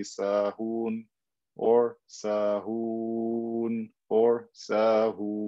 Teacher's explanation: Also here in the word sahoon, same thing, I have waw, dhamma before it. If I stop, I can say sahoon or sahoon or sahoon and stretch it for six haraka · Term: med